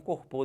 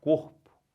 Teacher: você pode forçar a vontade no cor que vai ficar certo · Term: paroxítona